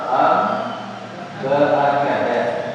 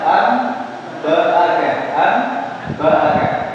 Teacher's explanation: suara nun sukun atau tanwinnya dirubah menjadi mim sukun dengan tempo dengung yang dipanjangkan jadi suara nun sukun atau tanwinnya jadi berubah menjadi mim sukun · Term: iqlab